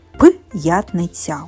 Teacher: ми пишемо апостроф після букв б п м ф ф - ми завжди чуємо що це тверді губні приголосні вони не можуть бути м'якими